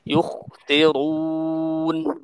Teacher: খাকে ভারী এবং বাতাস বের করে পড়তে হবে